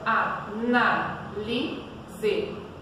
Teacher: Neste caso é o na, né? Que tem o som mais forte. Então, essa é a nossa sílaba tônica.